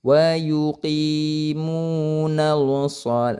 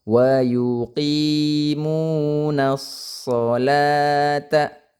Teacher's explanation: ini as-sholata ada alif lam bertemu huruf shod, maka dia alif lam syamsiyah. Jadi alif lamnya tidak dibaca. Jadi jangan dibaca wa yuqimunal shol.